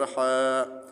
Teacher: حا کو ایک الف کے برابر کھینچ کر پڑھیں گے۔